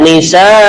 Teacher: Kemudian nisa, di sini juga panjang, namanya mad wajib muttasil.